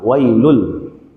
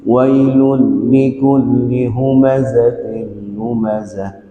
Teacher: Langsung suara tanwinnya itu digabung kepada lam, wailul. Tapi bila gunnah jangan sampai berdengung. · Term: idgham bila gunnah